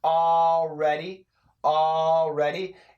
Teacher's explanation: here the L and the r kind of blend together it's more of an already already you're already you're already a